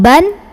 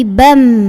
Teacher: kita akan ganti bunyi tanwinnya dengan bunyi mim sukun Jadi bukan ban tapi BEM sambil dengung nahan dulu Hai mbak